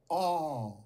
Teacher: And one unrounded, low back vowel.